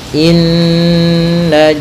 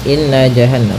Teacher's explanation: Pada bacaan inna di sini ada hukum tajwid, yaitu gunnah, yaitu cara membacanya adalah kita menahan suara nunnya ya terlebih dahulu sepanjang 2 harakat lebih sedikit ya, kemudian baru kita baca janya.